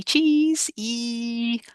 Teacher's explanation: because our lips come back and our mouth is closed um it's very high up in the mouth